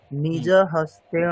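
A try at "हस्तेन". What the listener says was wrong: হস্তেন, মূর্ধন্য নয়, দন্তন্য হবে।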